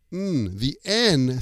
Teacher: And the end of the word is an N sound. The N sound, your tongue goes to the top of your mouth. And it kind of presses there.